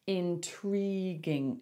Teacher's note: So we put the stress on the second syllable